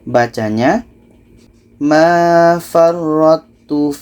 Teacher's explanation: Ini idgham mutajanisan. Ta ini yang asalnya qalqalah tidak dibaca lagi. Jadi ra ini terus melompat ke ta.